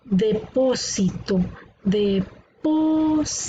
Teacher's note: la sílaba tónica está en la antepenúltima por lo tanto es una palabra esdrújula